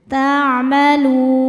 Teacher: Huruf yang disukunkannya nun. Maka lamnya panjang. Boleh dua atau empat atau enam harakat asal konsisten dalam sekali duduk. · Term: mad arid lukun